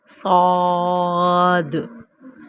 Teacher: پر پڑھیں گے اور ہونٹوں کو گول نہیں کریں گے